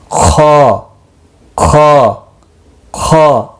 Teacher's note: ख मुस्तालिया में से भी है, इसको मोटा पढ़ना है, यानी पुर पढ़ा जाएगा